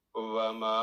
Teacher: الف مد صغیر 3 to 4 سیکنڈ آواز لمبی